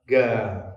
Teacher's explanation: Di Yaman kebanyakan orang mengucapkan qaf itu seperti huruf G.